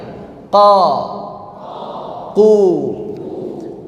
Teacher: dari qo yang gemaknya banyak kemudian qu gemanya berkurang qi gemanya semakin berkurang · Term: tafkhim